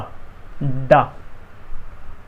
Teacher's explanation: अब ड और ढ कैसे बोले जाते हैं, तो उसकी तकनीक ये है कि हमारा तालु है, उसके आगे वाले हिस्से में हम जीभ को पलट देते हैं और चिपकाते हैं तो प्रोनाउंस होता है डा, डा।